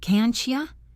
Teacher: The T and Y blend together to make a ch sound.